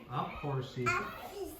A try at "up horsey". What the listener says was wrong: you're having trouble getting those two stay together.